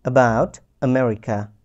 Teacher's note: এখানে এই আ সাউন্ডটা একদম গলা থেকে উচ্চারণ করেছি, এবং এতে কোনো জোর প্রদান করিনি বা স্ট্রেস দেইনি, স্বাভাবিকভাবে উচ্চারণ করতে হবে। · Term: শর্ট আ